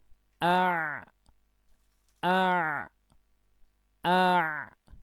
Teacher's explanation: Dalam bahasa Arab disebut lisanul mizmar. Jadi epiglotis ini bergerak ke belakang, ya, akhirnya mepet ke dinding tenggorokan. Itulah yang akhirnya membuat sebagian suara ain itu terhambat. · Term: huruf ain